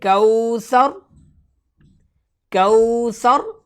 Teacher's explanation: یہاں وقف کرتے ہوئے را کو موٹا پڑھیں گے